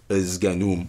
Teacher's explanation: Izganum with the schwa before the cluster, zga.